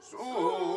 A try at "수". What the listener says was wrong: 하나를 찍고 바로 내려와. 수시다 미음을 찍고 밑으로 바로 내려와. 수시다 수 하고 그 한 음이 더 나오면 안 돼. 수시다 수우 1년 1도 되면은 미끄러지면 소리가 엣지가 없지. 아니라고 더 높은 음을 설정해서 거기서부터 내려와서 탁탁탁 찍고 내려오는 건데 전부 다 무슨 물이 막혔간디 무엇이 어쩌고 저쩌고 전부 그런 식으로 하니까 전부 다 구렁이 담 넘어가더라고.